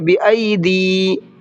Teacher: دی دال کو کھینچنا ہے، دی پڑھنا ہے، دیہم نہیں پڑھنا ہے